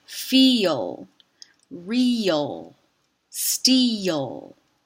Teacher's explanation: This dark L is syllabic, so it creates its own syllable.